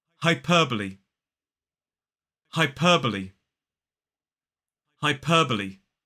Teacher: 4 syllables, the stress falls on the second